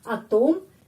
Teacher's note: Atom di sini penekanannya pada huruf O. Jadi O tetap bacanya O.